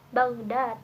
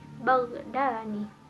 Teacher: Dal yang pertama ini mempengaruhi dal yang kedua, sehingga dal yang kedua berubah menjadi nun. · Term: disimulasi tidak langsung